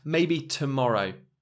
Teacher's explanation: tomorrow has a schwa towards the beginning